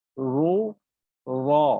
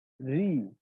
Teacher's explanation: তাহলে কিন্তু আমার এই শব্দটার মধ্যে একটা ভেরিয়েশন আছে, অর্থাৎ যখন জবর পেশ হচ্ছে তখনই আমার মোটা হচ্ছে, এবং যখন জের হচ্ছে তখন কিন্তু এটা অটোমেটিকলি পাতলা হয়ে যাচ্ছে